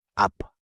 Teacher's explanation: Final 피읖 becomes a 비읍 sound at the end